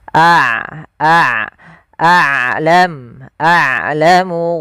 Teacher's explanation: Rokhawah yaitu sifat yang dimana dia harus dialirkan suaranya, sedangkan syiddah adalah suaranya tertahan. Nah, ain tidak terlalu ditahan dan tidak terlalu dialirkan, maka tengah-tengah. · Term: sifat bainiah, sifat bainiyah